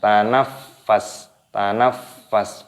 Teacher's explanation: bukan idza tanafas, tapi ditekan terlebih dahulu dan dimatikan pada huruf sinnya.